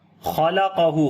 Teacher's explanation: خا اور قاف دونوں کو موٹا پڑھیں گے